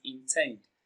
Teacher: Intend is pronounced and broken down into syllables as intend. Tend receives the stress. It is pronounced louder and longer.